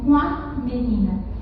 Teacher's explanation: O N não é considerado ali como uma consoante, ele é considerado como um sinal nasalizador.